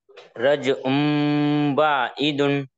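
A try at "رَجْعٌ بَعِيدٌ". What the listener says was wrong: अरे बाबा, हरकत को कैको खींचते जी बाबा, जब से आप पढ़े सुने ना आप।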